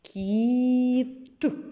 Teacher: в кінці слова приголосний твердий звук т